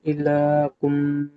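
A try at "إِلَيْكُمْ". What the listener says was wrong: ইলাকুম হবে না, লাই, লাম ইয়াজের পর লাই উচ্চারণ হয়। ইলাইকুম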